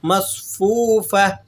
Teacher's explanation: مصفوفہ، اور یہ تا کا وہی کانسیپٹ ہے جو ہم نے شروع میں دہرا دیا، تو بس آپ نے اسی قدر اس کو سمجھ لینا ہے کہ گول تا کو وقف کی حالت میں آپ نے ہا سے تبدیل کر کے پڑھنا ہے